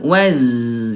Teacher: kalau zai rokhawah lemah, mengalir